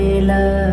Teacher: লামের মাখরাজ জিহ্বা অগ্রভাগ দুই পাশে দুই কিনারা, সামনের উপরের দাঁতের মাড়ির সাথে লাগিয়ে বলতে হবে লা।